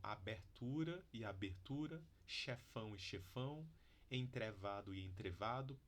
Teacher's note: Entretanto, a gente já sabe hoje que em alguns dialetos do norte e do nordeste, mas não são todos também, mas em alguns, é possível manter uma vogal média baixa, mesmo em posição pré-tônica, tá? Então, essas palavras aqui, elas têm variação dialetal no Brasil.